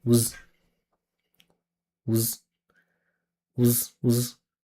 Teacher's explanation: These small words are usually turned into voiced sounds. So this S turns into a Z. But what we do is we in a reduction, we remove the vowel completely.